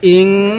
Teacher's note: ওয়াও জবর ওয়া, হামজা লাগবে এই নুনের সাথে ইং। এই নুন সাকিনের মধ্যে আমরা গুনাহ করব, কারণ নুন সাকিনের পরে এই তাটি হলো ইকফার হরফ।